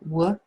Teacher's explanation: So because Harry's too upset to speak, we just hear what. We don't hear the H sound.